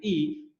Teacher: Unaposema vokali i, unapotamka vokali i, ulimi unainuka juu kabisa. Na ndio maana kigezo cha mwinuko wa ulimi, tunapotamka sauti au irabu i, unapata kwamba ni irabu ya juu ya ulimi.